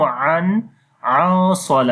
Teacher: we are hiding the sound of noon, and also we are making the heavy sound due to heavy ikhfa